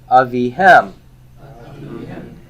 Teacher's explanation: Where's my stress? It's on the hem.